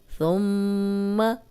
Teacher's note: اور اس کی زبر کو لمبا نہیں کریں گے، ثم۔ ثا کو نرم پڑھیں گے، سیٹی کی آواز نہیں آئے گی۔ اوپر سامنے والے جو 2 دانت ہیں ان کے اندرونی کنارے پہ زبان رکھ کے ادا کریں گے